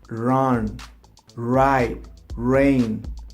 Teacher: In English, the sound comes from the throat, okay? It's not the tongue, the one vibrating. It's the throat.